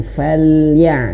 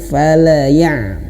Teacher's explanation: huruf lamnya awas jangan sampai dipantulkan.